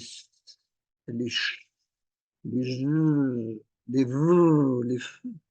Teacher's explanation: de faire prendre conscience de ces continus parce que justement on peut les continuer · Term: sons continus